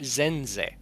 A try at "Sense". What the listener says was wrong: You would just pronounce the E, the second E less, you'd say Zenza.